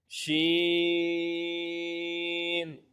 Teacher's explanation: जबान के दरमियान और तालू के दरमियान से अदा होता है · اگلا حرف شین، اس کا مخرج ہے زبان کے درمیان اور تالو کے درمیان سے ادا ہوتا ہے